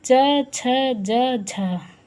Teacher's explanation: लेकिन स्पर्शी प्लस संघर्षी, स्पर्शी भी हैं और संघर्षी भी हैं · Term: स्पर्शी संघर्षी